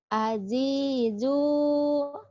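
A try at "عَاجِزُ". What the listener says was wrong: Ajizu beda ya. Jimnya keras, zanya rapuh nih. Ajizu. Ajizu.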